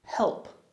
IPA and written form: help (help)